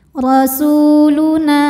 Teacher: hukumnya adalah Mad Thobi'i dahohiri sebab ada wau sukun didahului dhamah maka Sin dipanjangkan dua harakat